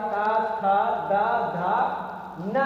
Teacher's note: तो दंत व्यंजन वर्ण जो होते हैं उनके उच्चारण में मेन जानकारी यह है कि अगर जिह्वा का अग्रभाग ऊपरी दांत या दांतों का स्पर्श करे